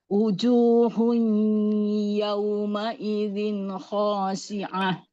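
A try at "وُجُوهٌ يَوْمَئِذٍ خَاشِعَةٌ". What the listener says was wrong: Ya, biar wawunya nggak kayak hamzah, nggak uju, monyongin waw.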